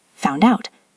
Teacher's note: First link found out. Consonant D to vowel O.